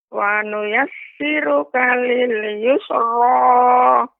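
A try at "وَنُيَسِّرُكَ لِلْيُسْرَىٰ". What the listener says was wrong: Sinnya masih memantul, terasa memantul.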